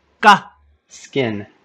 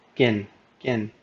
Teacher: the K in skin would be unaspirated